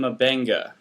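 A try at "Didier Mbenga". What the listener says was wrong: Mabenga, but you got to click. Got to make a clicking noise to say it correctly.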